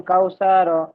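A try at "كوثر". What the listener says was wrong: সা টান হয়ে যাচ্ছে, যেমন কাউ সার।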